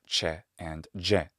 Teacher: these sounds are called post alveolar affricates